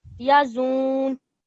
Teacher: So we're not making it longer, the zai longer. We are just pausing a little bit on the noon mushaddad because we have to give extra stress to it.